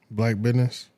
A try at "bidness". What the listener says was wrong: Black bidness. Not business. Bidness. B-I-D-N-E-S-S. Bidness.